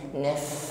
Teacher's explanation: Wala manafsah, naf fa sukun nampak sifatnya hamas jarayan dan nafasi. Naf, ada nafas yang mengalir di situ.